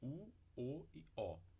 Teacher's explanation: As três vogais posteriores do português a gente também produz com os lábios arredondados, U, O e O. As vogais anteriores e a vogal central a gente produz com lábios não arredondados.